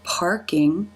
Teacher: the lips are in the r position and that the front part of the tongue has pulled back as the middle part of the tongue has fattened up and raised · the a as in Father followed by the r consonant sound the r consonant sound has a way of taking over this vowel and you can see the lips are in the r position